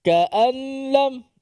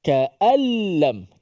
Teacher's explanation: Nun tu dimasukkan ke dalam lam secara semuanya, total. Makhraj dan sifat nun masuk ke dalam lam. Sehingga nun tak dibunyikan apa-apa lagi. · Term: bila gunnah, idgham